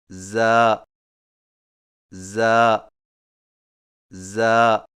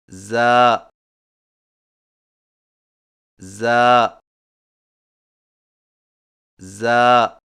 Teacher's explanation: زبان کی نوک کو سامنے والے نیچے کے دو دانتوں کے کناروں سے مضبوطی سے لگا کر باریک اور سیٹی جیسی آواز میں پڑھیں